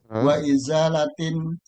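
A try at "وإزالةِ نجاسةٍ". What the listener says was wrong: Jangan tanwin ini. Wa izalati.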